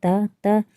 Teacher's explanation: जो हमारी जीभ है वह हमारे दांत से टकरा रही है, तो इसका जो उच्चारण स्थान हो जाएगा वह हो जाएगा दंत। अब हम बढ़ते हैं अपने प्रश्न नंबर 13 की ओर।